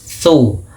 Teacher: Nah, perhatikan dalam lafal makhraj huruf tsa. Tsa makhrajnya ujung lidah kita menempel dengan gigi seri dua ini